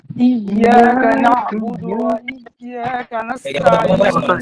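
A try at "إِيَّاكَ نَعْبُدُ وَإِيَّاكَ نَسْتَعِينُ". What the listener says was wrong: এই ইয়াটা চাপ দিয়ে গেছেন আবার। এতক্ষণ তো আপনি যেটা হচ্ছে সেটাই করছেন।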